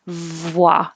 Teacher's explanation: i have to make the v with my top teeth on my bottom lip and i can't round my lips when i do that because it pushes the lips too far away so start rounding